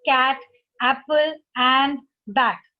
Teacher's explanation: तो जब हम इसमें A का प्रयोग कर रहे हैं तब ध्वनि आ रही है ए की